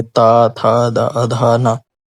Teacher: तो जीभ कहाँ घलेगी, दांतों में